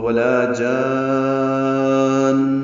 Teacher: ولا جان لمبا کر کے نون مشدد پہ غنہ کریں گے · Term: مد لازم کلمی مثقل